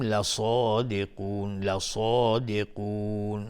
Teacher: صاد از حروف استعلاء غلیظ تلفظ میشه و قاف هم از حروف استعلاء غلیظ تلفظ میشه. لصادقون مد عارض السکون به مقدار 2 یا 4 یا 6 حرکت میتونیم مد بدیم.